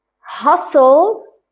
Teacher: the first part is hustle, we don't pronounce the T